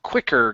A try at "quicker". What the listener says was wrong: give me an R